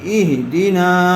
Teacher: نون الف زبر نا، اہدینا. زبر والے حرف کے بعد الف آیا ہوا ہے، اس لیے یہاں پر الف مدہ ہوگا، نون کو تھوڑا کھینچ کر پڑھیں گے